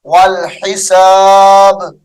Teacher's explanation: وقف کی حالت میں والحساب پڑھیں گے با کو ساکن کر دیں گے